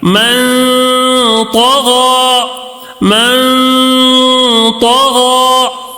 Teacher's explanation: غنہ کر کے، ایک الف کے برابر غنہ کر کے پڑھیں گے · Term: نون ساکن کا اخفا